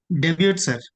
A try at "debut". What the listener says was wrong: Uh T is silent.